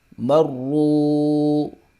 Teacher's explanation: واو ساکن سے پہلے پیش آ رہی ہے، یہاں پر مدہ ہوگا، یعنی کہ ایک الف کے برابر اس کو کھینچ کے پڑھیں گے · را کے اوپر پیش ہے، اس کو موٹا کر کے پڑھیں گے، پر کر کے پڑھیں گے